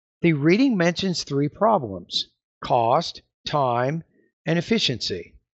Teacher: However, if you have a colon, as in this example here, the tone's going to go up as you pause right before the colon